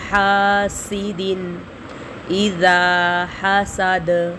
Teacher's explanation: وَمِن شَرِّ حاسد، ہا کو حلق سے بھی نکالیں گے اور ایک الف کے برابر ہا کو کھینچیں گے کیونکہ الف سے پہلے ہا کے اوپر زبر ہے. حاسد، سین میں سٹی کی آواز آئے گی. حاسد اذا حسد، اذا پہ ذال کو ہم ایک الف کے برابر کھینچیں گے کیونکہ الف سے پہلے ذال کے اوپر زبر آ رہا ہے.